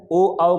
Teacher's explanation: ओ औ का उच्चारण कंठोष्ठ से होता है